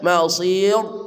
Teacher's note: Azabin nar, nar, wa bi'sal masir, sad, sa, si, su, ujung lidah bersama ujung gigi di bawah, masir, masir, sa, si, su, wa bi'sal masir, ra-nya dibaca tipis tarkik karena sebelum ra ini ada ya mati didahului oleh harokat kasrah menjadi mausir, nyengir mulutnya, enggak boleh mausir ya, jadi mausir, ra-nya dibaca tipis atau tarkik dibaca mausir ya.